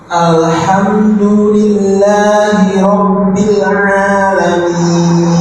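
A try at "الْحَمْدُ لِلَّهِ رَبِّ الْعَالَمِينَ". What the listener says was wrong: Ahsantum.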